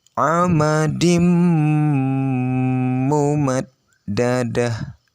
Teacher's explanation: Maka yang mendengungnya adalah di mimnya, bukan di tanwinnya. Tanwinnya hampir tidak terdengar. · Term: idgham bihunna